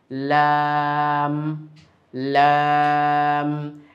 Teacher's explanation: জিহবার আগার কিনারা সামনের উপরে দাঁতের মাড়ির সঙ্গে লাগিয়ে উচ্চারিত হয়।